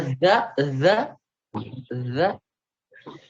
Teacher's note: ujung lidah bertemu ujung gigi depan atas